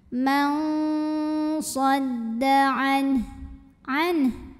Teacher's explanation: Maka nun sukun ini kita bunyikan dengan samar-samar ya. Jadi nun sukunnya dibunyikan samar, kita siap-siap ke makhraj huruf depannya yaitu ke shad disertai bunyi dengung